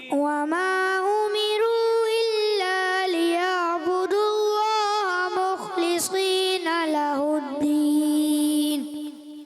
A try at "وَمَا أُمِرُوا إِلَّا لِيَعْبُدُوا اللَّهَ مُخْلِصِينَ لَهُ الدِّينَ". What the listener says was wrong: Good مگر تھوڑا سا اور رک کر. زیادہ بھی نہیں کھینچنا. اس سے کیا ہے آپ کا ٹیمپو خراب ہو جائے گا, تو آپ نے ٹیمپو کو برقرار رکھنا ہے.